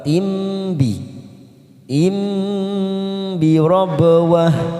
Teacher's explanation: ada tanwin pada huruf ta marbuthah di sini bertemu dengan ba, namanya bacaan iqlab, kita tekan 3 ketuk